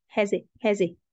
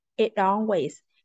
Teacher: The T in it turns into a glottal T.